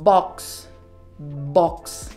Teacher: diferencia entre estas dos letras es la posición de tus labios para la b b vas a juntar tus labios y ahí sí proyectas el sonido